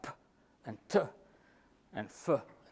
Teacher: sounds like puh and tuh and fuh are produced without vocal cord vibration